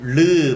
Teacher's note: 르 하면은 혀 사이로 장애를 받지 않고 소리가 그냥 흘러나와. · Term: 유음